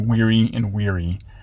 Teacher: they collapsed this vowel pairing the weary and wary contrast into weary and weary so even if it's spelled like this it's weary as well